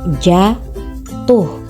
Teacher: silaba pertama pada kata jatuh diucapkan panjang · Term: tekanan